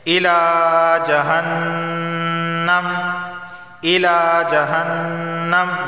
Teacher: نون پر تشدید ہے تو یہاں غنہ ہوگا